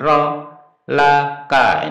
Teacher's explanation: Liyaghfira laka. Nah, untuk ro-nya dibaca pendek, satu harokat saja, satu ketukan